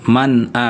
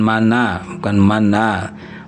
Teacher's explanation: Man a an'am ya itu ee izhar ya. Ini tidak ghunah, tidak dengung · maka bunyi Nun sukun ini jelas man a bukan mana, bukan mana.